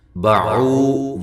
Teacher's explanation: باعو، واو مدہ ہے، وا کو موٹا ادا کریں، واد کو اس کے مخرج سے نکالیں